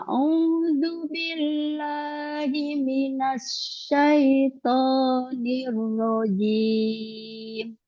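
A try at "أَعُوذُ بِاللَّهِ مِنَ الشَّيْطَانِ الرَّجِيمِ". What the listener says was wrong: coba ulang lagi, Gak usah pakai nada. Jadi a'udzubillahi minasyaitonir rajim.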